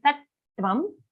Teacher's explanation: just stay on the ta a little longer because it's a double ta sound. We have to ensure that both the tas are heard.